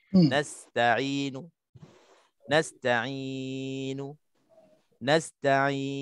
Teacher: boleh pilih 3 lagi qasr, tawassut, isba' 2, 4, 6 beserta ismam.